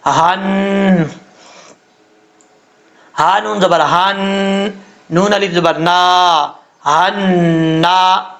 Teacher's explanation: یہ ہا جو ہے بھاری ساؤنڈ کے ساتھ پڑھا جائے گا، بریک ہا نہیں ہے، ٹھیک ہے، اس کا تعلق سینے کی طرف ہے، یعنی جس حلق سے ادا ہوتا ہے اس حلق کا تعلق سینے کی طرف ہے، اس لیے اس کو بھاری ساؤنڈ کے ساتھ پڑھیں گے۔